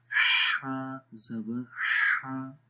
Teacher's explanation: میڈل of the throat آ رہی ہے، گلے کے درمیان والے حصے سے ، ہا ایزیلی پڑھیں گے، ٹھیک ہے، بہت ایسے کچھ لوگوں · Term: ہا کی آواز